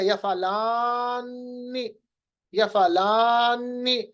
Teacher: मैंने लाम को लंबा, अलिफ को लंबा किया, ये तजवीज़ का कायदा है